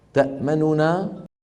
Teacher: أصلها تأمننا، وهي فعل مضارع مرفوع استثقل توالي 3 أحرف غنة متحركة، وتخلص من ذلك بإحدى الطريقتين: الأولى الروم تأمننا، وذلك بإبقاء ضمة النون الأولى وخفض صوتها قليلا مع سرعة بالنسبة لما جاورها من الحروف